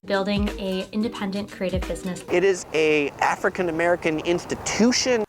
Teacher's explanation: YouTubers using the strong pronunciation of the indefinite article, a, even before a vowel.